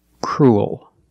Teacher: We're not pronouncing the E. We're pronouncing the U-E together as the sound U, crew, leaking it to a dark L,